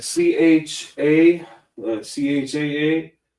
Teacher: So it's like a rough H. It's not a ch.